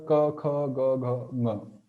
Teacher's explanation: So all these sounds are originated from kantaha, from throat.